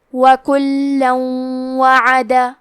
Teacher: واو حروف الادغام بغنہ میں سے ہے تو ہم یہ حکم کو غنہ اور تشدید کے ساتھ ادا کریں گے